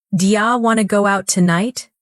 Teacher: When you listen to the fast version, what disappears? The do, the to, even part of tonight. But the rhythm stays the same.